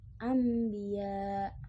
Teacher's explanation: Proses dari huruf nun ke huruf ba itu proses membalik dulu ke huruf mim. Terus jadi ba. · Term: iklab